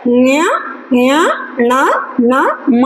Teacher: ಹಾಗಾಗಿ ಈ ನಾಸಿಕ ಅಕ್ಷರಗಳನ್ನು ಯಾವುವು ಉಟ್ಕೊಳ್ತಕ್ಕಂಥವು ಯಾವುವು ಅಂದರೆ ನ್ಯ ನ್ಯ ಣ ನ ಮ ಅಂತಕ್ಕಂಥದ್ದು ಏನಿದಾವಲ್ಲ ಅವು ನಾಸಿಕ ಭಾಗದಿಂದ ಅಂದರೆ ಮೂಗಿನ ಒಂದು ಭಾಗದಿಂದ, ಮೂಗಿನ ಸಹಾಯದಿಂದ ಉಚ್ಚರಿಸ್ತಕ್ಕಂಥ ಅಕ್ಷರಗಳಿಗೆ ನಾವು ಅನುನಾಸಿಕಗಳು ಅಂತ ಹೇಳ್ತೀವಿ. ಆ ಅನುನಾಸಿಕಗಳು ಎಷ್ಟಿದಾವಪ್ಪ ಅಂದರೆ 5 ಇದಾವೆ ಅಂತಕ್ಕಂಥದ್ದು.